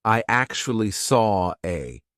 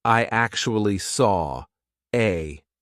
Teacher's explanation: the intrusive r is when we insert an R to link to the next word even though there's not an R written there we just put one in and this can be extremely confusing · the reason why we're doing an R here is because we have the or sound of Saw and then an a we have another open vowel sound